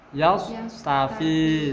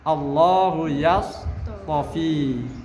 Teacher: Makhrajnya tidak boleh geser ke makhrajnya shad. Tetap di makhrajnya ta, akan tapi dia bersifat idbaq